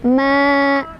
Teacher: Fama yukadzibuka ba'du biddin. Fama ada mad tabi'i karena ada alif sebelumnya fathah di huruf mim. Cara bacanya panjang 2 harokat. Ma. Yukadzi, ditekan ada tasydidnya di dzal.